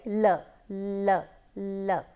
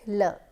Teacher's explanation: So, when you are saying l, you can easily understand that the tip of the tongue is coming to the upper portion of our mouth, but then the sides are open for air to come out. So, air can easily come out. So, air comes out and we have sounds like l. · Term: laterals